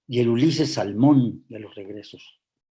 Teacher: es un endecasílabo tiene 11 sílabas el acento prosódico está en la sílaba sexta · El acento prosódico está en la sílaba sexta, que es la central, en Salmón